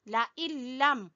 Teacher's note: ला यहाँ भी इदगाम बगैर गुन्ना है , ला इल्लम, नून नहीं पढ़ना, नून लाम में दाखिल है,